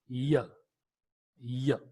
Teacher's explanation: You have only one palatal sound. The active articulator is the front of the tongue and the passive articulator is the hard palate.